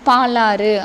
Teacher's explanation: தனக்குடைய அந்த ஒரு மாத்திரை அளவில் இருந்து குறைந்து ஒலிக்கக்கூடிய உகரம் குற்றியல் உகரம்